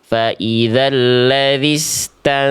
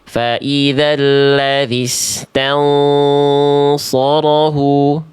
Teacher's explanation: Jadi ketika ikhfa itu pangkal lidahnya Kais itu sudah harus naik. Pangkal lidahnya kais ini harus sudah naik biar bunyi ikanya tebal. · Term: ikhfa hakikinya tebal